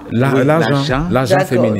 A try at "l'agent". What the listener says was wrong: Donc le T est muet, en fait. On ne le prononce pas.